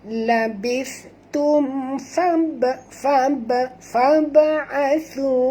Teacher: huruf ba mati di tengah-tengah kalimah, jadi kita kena lantunkan dengan lantun kecil. Sini hukumnya qalqalah sughra, ya.